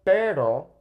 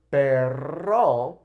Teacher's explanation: Okay, whereas with pero, it's kind of bouncing along that ridge. Okay, so pero tongue comes up, hits it, and it comes back down quick. Whereas perro kind of stays there and rattles as we blow out